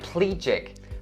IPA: ˈpliː-dʒɪk